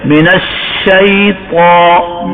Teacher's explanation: اب شین کی آواز منہ کے اندر پھیل گئی، کس صفت کی وجہ سے؟ تفشی کی وجہ سے